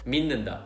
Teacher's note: for the 미, 받침 is 티귿, but that 티귿 turns into 니은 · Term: nasal assimilation